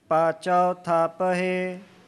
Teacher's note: ਥੱਪ ਹੈ ਲੰਬਾ ਨਹੀਂ ਕਰਨਾ, ਜੇ ਇਸ ਤਰ੍ਹਾਂ ਕਰਾਂਗੇ ਤੇ ਦੀਰਘ ਮਾਤਰਾ ਬਣ ਜਾਏਗੀ। ਥੋੜਾ ਉਚਾਰਨ ਹੈ।